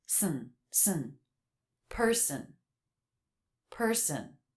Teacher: the second syllable doesn't really have a vowel in it it's the schwa sound but when the schwa is followed by n you don't need to try to make a separate vowel